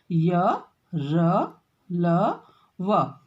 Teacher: जीभ मुख के किसी भी भाग को पूरी तरह से स्पर्श नहीं करती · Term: अंतस्थ व्यंजन